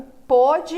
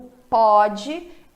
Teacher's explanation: o pôde é fechado o pode é aberto